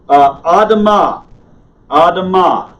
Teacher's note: Notice the stress is on the last syllable.